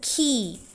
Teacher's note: key is aspirated which means that there is forceful expulsion of air in key